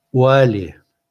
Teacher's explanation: И это «у» звучит как полугласное.